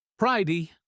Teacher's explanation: The T is a flap, sounding like a soft D.